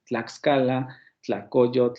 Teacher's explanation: Nosotros lo podemos pronunciar, pero es por nuestro origen latinoamericano, en donde este tipo de ataques es posible, justamente porque tenemos el ataque de la dental de la dental sorda con la lateral